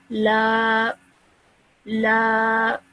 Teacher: we have to prolong the sound of lam for 2 seconds. So this would be pronounced as la, la. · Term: alif madda